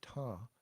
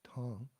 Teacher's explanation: Well, you may not if you're not familiar, but there is a dot indicating that it's not just ta, it's ta, with a slight nasal at the end.